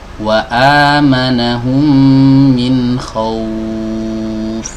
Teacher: pangkal lidahnya naik, kemudian bibirnya maju dan pita suaranya digetarkan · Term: huruf waw